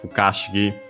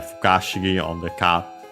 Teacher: Should be accented on the Ka, if I recall correctly.